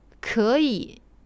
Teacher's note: Le K est proche du français, mais fortement expiré.